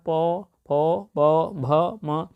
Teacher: ओंठ से बोले जाने वाले वर्ण पा वर्ग कहते हैं। पा, फ, ब, भ, म 5 वर्ण हैं।